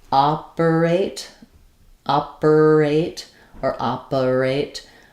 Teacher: R links the other two vowels